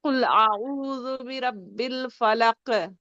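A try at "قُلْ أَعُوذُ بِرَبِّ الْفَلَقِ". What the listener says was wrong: Okay wait, یہاں پر دیکھیں را کیا ہے؟ را پہ ہیوی ہوگا کہ نہیں ہوگا؟ تو آپ نے تو رب فل کر دیا، را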